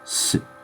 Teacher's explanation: When you run into u sounds in Japanese, especially when they're preceded by a consonantal sound, many times the u is kind of dropped, leaving a bit of a pause in the word. This isn't necessary, but it is common, especially with su.